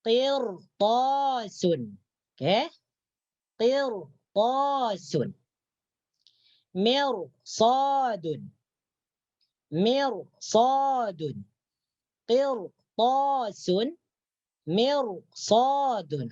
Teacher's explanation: apabila ada ra, kemudian setelah ra tersebut ada salah satu huruf isti'la, huruf yang dibaca tinggi, maka ra tersebut dibaca tebal atau tafkhim